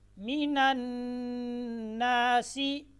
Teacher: نون جب مشدد ہو تو اس میں غنہ ہوگا، جس کی مقدار 1 الف کے برابر ہے، یعنی بند انگلی کو کھولنے میں جتنی دیر لگتی ہے اتنی دیر آپ نے اس کو غنہ کرنا ہے۔